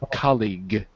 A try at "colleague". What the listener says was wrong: Yeah, with a g at the end.